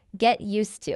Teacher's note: there's actually a D at the end of that word. Get used to. But we don't say the D